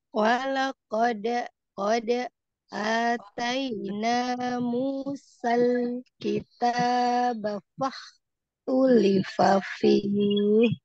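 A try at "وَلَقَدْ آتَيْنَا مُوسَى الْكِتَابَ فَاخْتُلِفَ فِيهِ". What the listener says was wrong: D-nya kurangnya.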